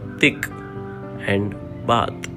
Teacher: produced by narrowing the airway with the tongue and the space between the teeth